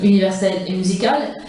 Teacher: reprennent en début du mot le son vocalique fermé, U